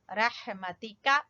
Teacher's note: رحمتی کا، ہا کو وسط حلق سے